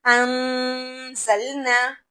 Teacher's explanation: ہم نے نون کو ظاہر نہیں کرنا، نون کو اندر ہی اندر چھپانا ہے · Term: گنگناہٹ